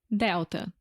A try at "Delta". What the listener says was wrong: Quase igual, mas também dá para ver quando tem a letra L, quase sempre vira o som do U em português. Delta. Não é Delta, mas fala de novo.